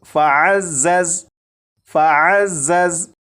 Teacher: ज़ा को सख्ती से पढ़ेंगे, यानी सीटी की आवाज़ के साथ।